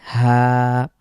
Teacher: আকার হা বাংলা যেভাবে উচ্চারণ করি কোন রকম কণ্ঠ বা অন্য কোন কিছুর সহযোগিতা ছাড়া খুব স্বাভাবিকভাবে হা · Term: হাজ